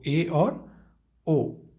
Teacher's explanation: अर्ध समृद्ध स्वर जिनमें आधा बंद हो